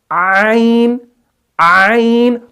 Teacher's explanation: پہلے عین، عین، تو آپ نے عین کی آواز کو پہلے سٹارٹنگ میں تھوڑا سا سکویز کرنا ہے